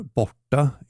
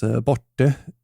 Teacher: modern Gotlandic dialect often switch out the A at the end of the word to E instead. For example, gone or borta in Swedish is pronounced as borte in Gotland.